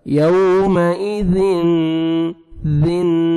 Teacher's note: سامنے والے جو 2 دانت ہیں نیچے زبان کو لگائیں گے، نرمی سے ادا ہوئے گا زال